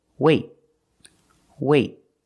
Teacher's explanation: you put your tongue up in the T position but you don't release example wait wait I don't say wait I don't release the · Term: stop T